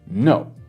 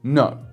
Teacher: It's just as if you're talking to a dog who's being naughty and you say, no. So you start kind of high, kind of like around first tone-ish level, and then you just go straight down, no. In fact, this kind of starts a little bit higher than first tone. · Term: fourth tone, assertive tone